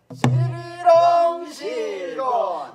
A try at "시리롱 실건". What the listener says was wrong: 실건이 그렇게 밍숭하지가 않고. 시리롱 실건 실건 이렇게 이렇게 오기가 붙어야 돼.